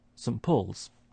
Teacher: the t sound is disappearing, that's elision. That puts the n sound next to the p, and it starts to sound like a m